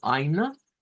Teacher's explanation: EI escrito suena a I y esa E al final que se va a convertir en un schwa.